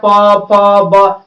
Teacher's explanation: प फ ब सब में ओठ सट रहा है